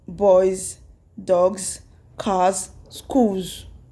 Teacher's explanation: So you are going to add s to it also, but the pronunciation is going to be z, not s. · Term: z sound